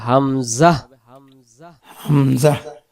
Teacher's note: এই গলাটার শুরু থেকে অর্থাৎ জিহ্বার গোড়া আর গলা যেখানে শেষ শুরু ওই জায়গাটা থেকে আমাদের উচ্চারণটা হবে হামজা হামজা তাহলে হামজা অক্ষর হলকের প্রথম থেকে শক্ত করে পড়তে